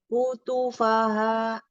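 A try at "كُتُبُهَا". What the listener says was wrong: Hati-hati dengan domahnya. Di situ ada domah bertemu dengan waw mati. Ya, jadi 2 harokat bacanya. Ini 1 harokat, 2 harokat, 1, 2 harokat.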